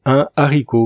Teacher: quand le H est aspiré, on ne fait pas la liaison